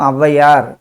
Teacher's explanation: ஔ தனியாக ஒலிக்கும் போது 2 மாத்திரை அளவில் ஒலிக்கும். சொல்லின் முதலில் வரும்போது 1.5 மாத்திரையாக குறைந்து ஒலிக்கும். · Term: ஔகார குறுக்கம்